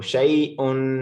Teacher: ये bottom of throat के, यानी कि गले के सबसे निचले हिस्से से, जहां पे हमारी गर्दन कनेक्टेड है हमारी छाती के साथ, वहां से हम इसको हमजा को पढ़ेंगे।